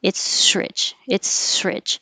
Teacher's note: This is interesting because really it's an S and an R, so there wouldn't be a connection, but it's rich. As I'm moving from my S to the R, I keep pushing air and you're going to hear a sh.